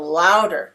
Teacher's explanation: I'm speaking more loudly on the first syllable of this word. And it is also typically in English higher in pitch.